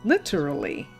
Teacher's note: Or you can dull the T a little bit, like we Americans tend to do, and say something that sounds closer to lid.